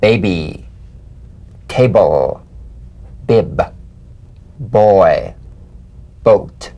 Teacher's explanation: Voiced, labial stop or plosive consonant. A drumbeat staccato consonant. Close the lips together gently and let them spring apart lightly. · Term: drumbeat B